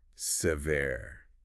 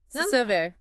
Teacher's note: The first syllable is a schwa sound. Yeah, that's like a very short sound.